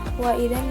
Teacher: terdapat hukum tajwid gunah musyadadah karena ada Nun bertasjid dibacanya dengan cara berdengung